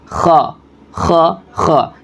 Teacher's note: اس کو بھی حلق سے ہی ادا کریں گے۔